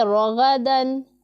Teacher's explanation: یہاں پر الف مدہ ہو رہا ہے، جسے ہم ایک الف کے جتنا لمبا کر کے پڑھیں گے، اور غین بھی پر پڑھا جانے والا حرف ہے، غین حلق کے اوپر والے حصے سے ہم ادا کرتے ہیں، اسے ہم پڑھیں گے رغدن، را کے اوپر زبر ہے تو را پر پڑھا جائے گا